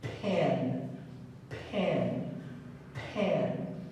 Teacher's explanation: the letter P does not have voice in it, just a puff of air